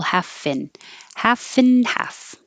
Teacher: You don't have to say the and, just the n noise. Well, when you go from the F to the N, you'll hear a vowel.